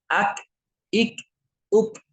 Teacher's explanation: Kaf itu pangkal lidah bertemu dengan langit-langit keras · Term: huruf Kaf